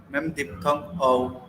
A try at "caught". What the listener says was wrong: The O sound, right? It's a pure vowel. It's a short O sound.